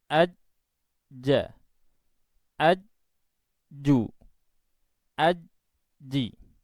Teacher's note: Suara keluar tanpa diiringi udara nafas, karena jim itu mempunyai sifat jahar. Sehingga pengucapannya kurang lebih seperti ini: ajja, ajju, ajji. · suara tertahan di makhraj dan dilanjutkan dengan apa suara keluar tanpa diiringi udara nafas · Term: sifat Zaher